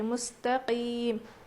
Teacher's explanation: اس میں بالکل بھی کھردری آواز نہیں بلکہ صاف آواز آنی چاہیے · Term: قاف